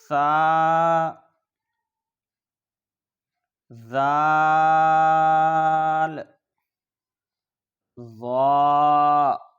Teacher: حروف لثویہ 3 ہیں: ثا، ذال، ظا۔ زبان کا سرا اور اوپر کے دانتوں کے اندرونی کنارے سے ادا ہوتے ہیں